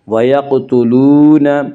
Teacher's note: واو مدہ کو 1 الف کے برابر کھینچ کر پڑھیں گے